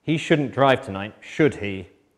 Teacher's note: I used falling intonation pattern to check the information because I know the answer.